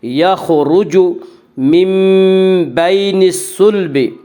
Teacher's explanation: یخرج من بین الصلب، من بین میں قلب ہوگا، اس کا قاعدہ ہے کہ نون ساکن اور تنوین کے بعد اگر بائے تو وہاں پہ قلب ہوگا، یعنی نون ساکن اور تنوین کو میم سے بدل کر غنہ کے ساتھ پڑھیں گے، اور یہاں نون ساکن کے بعد با رہا ہے اس لیے نون ساکن کو میم سے بدل کر غنہ کے ساتھ پڑھیں گے۔